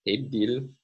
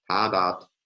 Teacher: hebdil, we have two front vowels, but number 46, hadat, has two back vowels